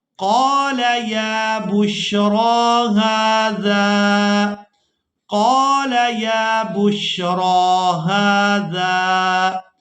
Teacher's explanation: یہاں پر ہم نے یا کو ادا نہیں کرنا، اس وجہ سے کہ اس پر کوئی حرکت نہیں ہے۔ را کو ہم نے کھڑی زبر کی وجہ سے کھینچ کر ادا کرنا ہے۔